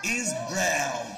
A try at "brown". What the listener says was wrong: أو ما نقولش براون نقول brown.